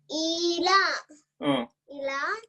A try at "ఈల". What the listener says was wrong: ఈలా. Correct నువ్వు చెప్పింది.